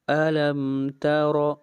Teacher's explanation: را کے اوپر زبر آ رہی ہے، را کو موٹا پڑھیں گے